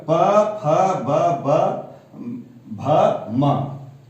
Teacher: पवर्ग प, फ, ब, भ, म इसका उच्चारण स्थल ओष्ठ है।